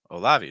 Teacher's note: Olavi is how I'd say that. Stress the second syllable. Notice that first syllable like Olavi, just a real quick, fast.